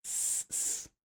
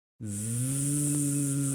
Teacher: surdo, so there's no vibration in your vocal cords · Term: voiceless